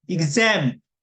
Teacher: 이번에는 X 다음에 A가 나는데 그즈로 나요.